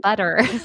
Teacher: a word like butter u t it's spelled with two t's all of the sudden when I say it sounds like the d sound